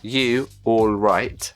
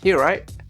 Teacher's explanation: You alright? And I'm doing that glottal stop thing at the end that I talked about.